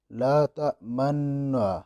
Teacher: اختلاس کا ویسے لفظی مطلب ہے اچکنا، کسی چیز کو کھینچ لینا، لیکن یہاں پہ جو اختلاس کا مطلب ہے کہ نطق صوتی حرکتین، دو حرکتوں کی آواز کو نکالنا، نطق کرنا، دو حرکات، یعنی ضمہ اور کسرہ، یہ دونوں حرکتیں اس کو ملا کر آواز نکالنا، یعنی ضمہ بھی ظاہر ہو کسرہ بھی ظاہر ہو، ایسی آواز پیدا کرنا، تو اس کو اختلاس کہا جاتا ہے۔